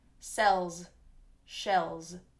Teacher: And same with sells, s, s, sells, and shells, sh, sh, shells. Note the ending on sells and shells is actually a Z sound, Z, Z, which is voiced, Z, sells, shells.